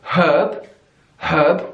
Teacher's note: is wildly different all right this this one I don't really in British English we say herb herb we have the H we give it the pronunciation herb in American English herb herb